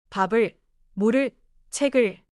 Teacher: Each one is written as two syllables, but spoken as one connected sound group. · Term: linking